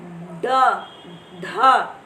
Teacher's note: उत्क्षिप्त यानी उल्टा होना। वे व्यंजन जिनके उच्चारण में जीवा की उल्टी हुई नोक, यानी जो हमारी जीवा की नोक है वो उल्टी हो जाती है, पलट जाती है ऊपर की तरफ को, और तालु को छूकर झटके से हटती है · आप बोले ड, ढ, जब ड और ढ बोलेंगे, देखेंगे आपकी जीवा पलट कर ऊपर तालवे में लग जाती है और फिर एकदम एक झटके से तालु को छूकर निकल जाती है, हट जाती है। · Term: उत्क्षिप्त व्यंजन